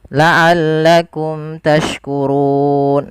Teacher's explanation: Apabila mim mati muta, kita namakan dengan hukum tajwid berupa bacaan izhar syafawi, yaitu suara mimnya harus dibaca dengan jelas